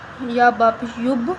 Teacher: اب با بھی حروف قلقلہ میں سے آ رہا ہے، ہم با پہ بھی قلقلہ کریں گے۔